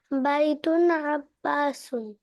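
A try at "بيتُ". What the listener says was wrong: বাইতুন হবে না, যখনই আমরা দুইটাকে মিলাবো তখন কিন্তু এক পেশ হবে, তানবিন হতে পারবে না।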